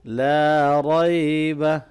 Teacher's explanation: لا الف مدہ کو لمبا کریں گے، را کو موٹا پڑھنا ہے۔